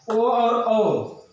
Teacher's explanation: ओ दौतो कंठोष्ठ, कंठ प्लस ओष्ठ दोनों से बोला जाता है